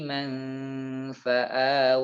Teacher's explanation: jadi Sudah ditempelkan jadi Man atau hampir menempel ke gigi atas bibir bawah sudah hampir menempel di gigi atas jadi manfaat tapi tidak perlu sampai ditarik ke dalam ya jadi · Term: ikhfa